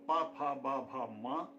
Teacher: इन सब की आवाज़ें हमें ओष्ठ के सहयोग से प्राप्त होती हैं। इनका उच्चारण स्थान हम कह सकते हैं ओष्ठ है।